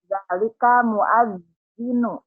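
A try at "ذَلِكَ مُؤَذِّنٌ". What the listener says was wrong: Muazzinun nan biazzinu atau muazzinun? Dalika muazzinun.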